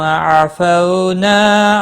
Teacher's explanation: نا الف مدہ ہے، ایک الف کے برابر کھینچ کر پڑھیں گے۔